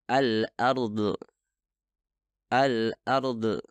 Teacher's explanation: Itu bukan suara yang meledak, melainkan dihasilkan ketika udara terbentuk di belakang lidah. Melepaskan udara ketika dhad berada pada akhir kata menyebabkan dhad mempunyai qalqalah yang merupakan praktik yang salah ketika berhubungan dengan huruf dhad.